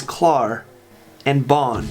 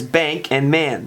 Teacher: German has a short and a long A sound, ah sound. The long is present in words such as klar and Bahn, and the short in words such as bank and man.